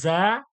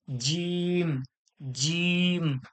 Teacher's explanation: জা টা জিব্বার আগা এবং দাঁতের আগা আর এই জিমটা হচ্ছে জিহ্বার মাঝখান ওর সরাসরি তালু